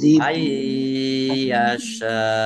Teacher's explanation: nun sukun bertemu dengan huruf ya, bacaan idgham bi gunnah, masuk dengan mendengung